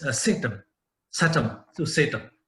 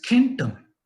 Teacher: So the KH, K, becomes the hard K in Greek or the H of Germanic, whereas the KH becomes Sh in Sanskrit